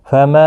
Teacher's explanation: یہاں پر مد منفصل ہے، 3 الف کی مقدار کے برابر کھینچ کر پڑھیں گے